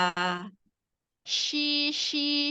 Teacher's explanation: Tengah lidah yang bertemu dengan langit-langit Tengah Tetapi dia enggak nempel ya dia hanya bertemu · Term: huruf syin